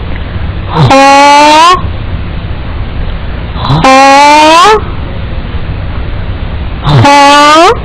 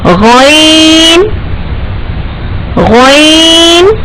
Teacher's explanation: ghain and kha are pronounced from the adnal halaq, or the part of the throat which is so close to our mouth